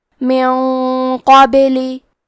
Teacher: کلمت قابلی میں حرف القاف کی ادائیگی زبان کے جڑ اور تالوں کے نرم حصے سے ہے۔ قاف حروف تفخیم میں سے ہے تو ہم یہ حرف کو موٹی آواز میں پڑھیں گے۔ · قاف حروف الاخفاء میں سے ہے تو ہم یہ حکم کو غنہ کے ساتھ ادا کریں گے کیونکہ غنہ میں اگلے والے حرف کا حکم لیتے ہیں تفخیم میں اور ترقیق میں اور حرف القاف حروف تفخیم میں سے ہے تو ہم یہ غنہ کو بھاری آواز میں ادا کریں گے